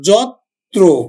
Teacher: যত্র আমরা অন্তস্থ জ উচ্চারণ করি না, বর্গীয় জ উচ্চারণ করি। আর এই রফলাযুক্ত বর্ণটা আমার উচ্চারণ হবে কিন্তু দুইবার, যত্র, পরেরটা ওকার হিসাবে উচ্চারিত হবে, যত্র।